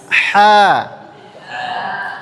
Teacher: Huruf H tidak sama dengan huruf H-nya orang Indonesia. Ha itu makhrajnya di mana? Ha di mana tempat keluarnya? Tenggorokan tengas tengah. Iya berada di tenggorokan tengah.